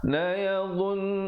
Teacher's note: Qala allazi, zi di hujung lidah, la yadhun, dha juga di hujung lidah tapi bunyinya tebal